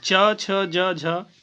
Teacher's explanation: ये तालव्य, गले से थोड़ा ऊपर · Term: तालव्य व्यंजन